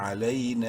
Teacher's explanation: یا لین ہے، لام کو علی، نون الف مد زبر نا، نون کو تین الف کے برابر لمبا کر سکتے ہیں